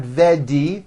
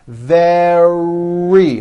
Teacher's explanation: Make sure that the R sound is strong and your lips are coming forward. Your tongue is back and you push out the R.